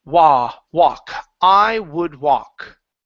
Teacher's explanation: now the L in walk is silent